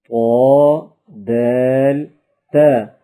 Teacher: زبان کی نوک اور اوپر کے دانتوں کی جڑ سے ادا ہوتے ہیں۔